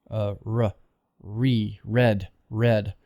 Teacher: you have to make the tongue go a little bit more forward a bit more toward the front of the mouth more toward the alveolar area re red red not red but